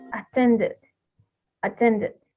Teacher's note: At the same time, we have the attend, and when we add ed at the end, the pronunciation of this is attended, attended, okay? With a e sound between the t and d sound. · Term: insertion